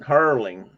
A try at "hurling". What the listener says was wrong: hurling. You said curling because